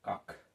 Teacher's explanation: কটা ক্ষয়ে পরিণত হচ্ছে, অল্পপ্রাণ মহাপ্রাণ ধ্বনিতে পরিণত হচ্ছে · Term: পিনায়ন